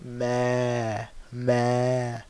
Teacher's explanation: So the a part, that's from your jawf